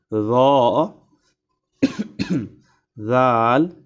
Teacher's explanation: জিহবার আগা সামনের উপরের দুই দাঁতের আগার সঙ্গে লাগাইয়া উচ্চারিত হয়